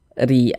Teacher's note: huruf ro memiliki harakat kasrah maka huruf r-nya dibaca tipis baca tarkik tipiskan huruf rnya